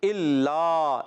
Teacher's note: الا حمزہ ہے, یہ الف نہیں ہے. لام مشدد, ذرا رک کر ادا کریں گے